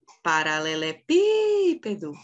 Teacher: a penúltima é o pé também não é a sílaba forte qual que é a sílaba forte é a anti penúltima é o pi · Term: proparoxítona, antepenúltima